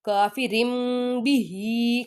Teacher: تنون ساکن یا تنوین کے بعد حرف با آ جائے تو اسے میم کی آواز میں بدل دیں گے. ان کے اوپر یہ دیکھیے چھوٹی سی میم لکھی ہوئی ہے، اس کا مطلب یہاں پہ اقلاب ہو رہا ہے.